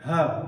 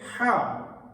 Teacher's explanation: ہا سادہ ہے، جس کی آواز ایک لحاظ سے پیٹ سے نکلتی ہے، ہا، اور ہا، اس کی آواز کو حلق سے ادا کیا جاتا ہے